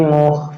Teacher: Ah ini khnya ya. Makhrajnya di tenggorokan bagian atas dan dia masih keluar